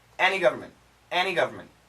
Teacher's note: we've studied the N can kill the T sound.